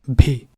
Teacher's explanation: This is with voicing and with aspiration, and it's not a sound we have in English. So be sure to listen closely and try to hear for that puff of air and that vibration.